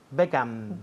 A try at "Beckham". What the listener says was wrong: Beckham. Todo el mundo aquí dice Beckham con la boca abierta. Beckham, pues cierra. Beckham, M.